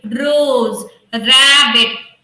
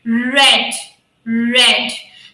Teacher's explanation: so my tongue is not touching it is just vibrating